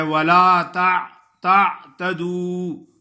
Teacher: عین کو درمیان میں نہیں پڑھتے، عین کو ظاہر کرنا ہے، عین ساکن ہے